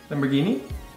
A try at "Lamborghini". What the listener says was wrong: There's no twang in Italian, so it would be Lamborghini. Lamborghini.